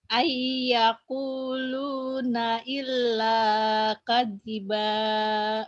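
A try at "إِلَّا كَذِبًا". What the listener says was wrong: Jangan kadiba. Kalau kadiba ada tasdid. Kadiba datar aja.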